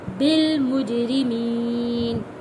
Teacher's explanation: جیم حروف کلکلہ ہے، آواز پلٹ کر واپس آئے گی، بالمجرمین۔